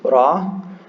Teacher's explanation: It's just like an R in, probably more like in Spanish. It's kind of like a rolled R.